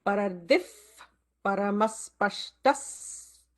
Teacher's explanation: notice the visarga followed by pa. It will create an F kind of a sound.